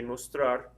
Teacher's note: the stress is over the ar at the end of it